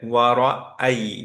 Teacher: অনেকেরই খুব small percentage কিন্তু হয় এটা, যে ওয়ারাই তেল্লাদি এরকম হয়ে যায়, রাইট? কিন্তু এখানে হামজা একটা সেপারেট লেটার, সো হতে হবে ওয়ারা আই, আই, এই সাউন্ডটা আসতে হবে, আয়ের সাউন্ডটা আসতে হবে, রাইট?